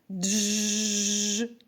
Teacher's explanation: Дж - це приголосний звук хоч ми чули два звуки але вимовляється злито як один на письмі позначається двома літерами д ж у слові бджилка він